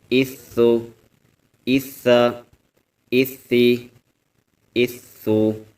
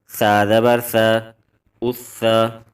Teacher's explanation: نہیں نکالیں گے، بلکہ سا نرمی والے حروف میں سے ہے۔ جب زبان کی نوک اوپر والے دانتوں کے کنارے سے ٹکراتی ہے تو اس سے سا ادا ہوتا ہے